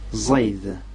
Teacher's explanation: C'est un Z dit emphatique.